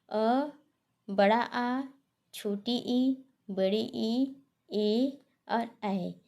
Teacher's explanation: वे स्वर जिसका उच्चारण करते समय ओष्ठ गोल नहीं होता है, यानी जिसे बोलने पर ओठ गोल नहीं होता है अपितु वो फैल जाते हैं। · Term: आवृत्तमुखी